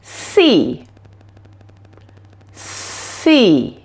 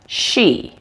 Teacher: for the S sound there is no voice coming from your vocal cords only air passing through your mouth